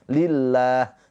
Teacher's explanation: Lafaz Allah sebelumnya harakatnya kasrah. Lafaz Allahnya dibaca dengan tarkik tipis pakai a. Lillah. Jangan dibaca lillah.